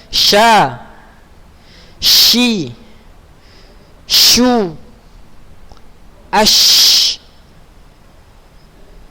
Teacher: Huruf sya di lidah bagian tengah pada posisi langit-langit bagian atas. Dia sama letaknya dengan huruf jim dan huruf ya.